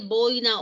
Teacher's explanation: boina acento en la penúltima sílaba la palabra es grave